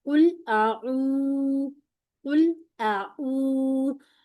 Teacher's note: एक तो राउंडिंग का ख्याल रखना है। दूसरा यहां पर टू काउंट पूरे करने हैं।